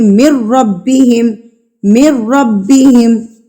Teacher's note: نون ساکن کے بعد یرملون میں سے را آ گیا ہمارے پاس، اس لیے ہم یہاں پر غنہ نہیں کریں گے، اس کو ڈائریکٹ پڑھیں گے